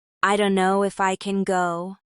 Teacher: But in fast English, don't know becomes dunno.